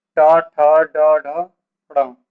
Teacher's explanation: पूरा टा वर्ग हमारा कहाँ से बोला जाएगा, मूर्धा से